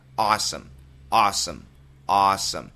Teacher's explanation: it's an A W sound not o but a which means your tongue needs to be pushed down a awesome it's not really Som it's more some awesome awesome